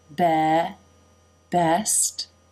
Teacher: Best, lips come together for the B, and the jaw drops